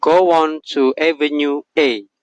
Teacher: when we say oh or you we naturally add a w sound to connect to the next word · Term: liaison